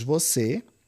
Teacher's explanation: duas sílabas e a tônica recai na última. Então aqui eu tenho oxítona terminada em e, por isso recebeu acento já em pegá-la. · nós temos você, duas sílabas, e a tônica recai na última